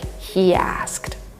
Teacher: we have this extra Y between these two words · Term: intrusion